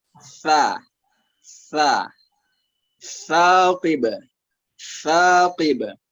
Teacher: huruf sa itu makhrajnya di punggung ujung lidah ketemu sama gigi seri atas